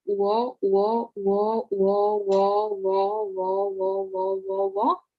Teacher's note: it's a combination of the vowels oo and o. If you read this really quickly, wo, wo, wo, wo, wo, wo, wo, wo, wo, wo, wo.